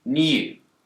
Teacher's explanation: In the word new, Brits will tend to pronounce a y sound here, new. But Americans don't. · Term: yod